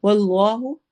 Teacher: واللہ اس میں جلالہ ہے، اس کو موٹا پڑھیں گے